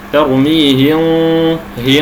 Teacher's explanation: ينطقون الغنه المخفاه كانها غين بغنه فيصبح النطق هكذا ترميه ه بالمبالغه بانفراج الشفتين تصبح الصوت كانه غين ساكنه